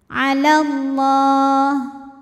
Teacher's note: jadi kalau wasal lamnya enggak ada alifnya Jadi pendek alallah lam pada lafaz Allah dibunyikan secara tafkhim karena huruf sebelumnya lam berbaris fathah maka dibacanya tebal la pangkal lidah naik